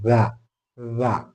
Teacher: പോലെ തന്നെയആണെങ്കിലും ഉച്ചാരണത്തിൽ ദാല പോലെ അല്ല ചെറിയൊരു വ്യത്യാസമുണ്ട് ദ എന്നാണ് പറയുന്നത് നാവിന്റെ ഈ തലയും പല്ലിന്റെ തലയും കൂടി മുട്ടിച്ചുകൊണ്ട് മൃതുവായി പുറപ്പെടുന്ന അക്ഷരമാണ് ദ